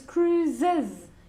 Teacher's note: Okay, cruise finishes with an S. So with the Saxon genitive, it's cruises. You have to add an extra syllable.